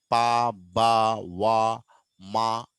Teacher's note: You use both lips to create the sound such as the beginning sounds as పిన్, బర్స్ట్, వెల్ and the ending sound in సీమ్ అంటే పా, బా, వా, మా. ఈ పదాలన్నీ పలకాలంటే కంపల్సరీగా మనము రెండు పెదాలను దగ్గరికి తీసుకొని వచ్చి గాలిని ఆపుతాం అన్నట్టు. సో అక్కడే మనకు ఈ సౌండ్ అనేది ప్రొడ్యూస్ అవుతుంది. · బైలేబియల్ అంటే రెండు పెదాలు. You use both lips to create the sound